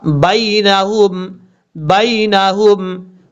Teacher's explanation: اس یا کو بھی لمبا نہیں کرنا، یہ یا لین ہے، یا لین جو ہوتا ہے اس کو لمبا نہیں کیا جاتا، شارٹ کٹ پڑھا جاتا ہے